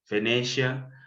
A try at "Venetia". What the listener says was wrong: It's actually Venita. The I is silent is Italian, but it's fine.